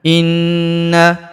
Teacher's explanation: Perhatikan, inna, huruf na kita tahan dan kita tekan, serta kita dengungkan 2-3 harokat karena terdapat tanda tasydid di atasnya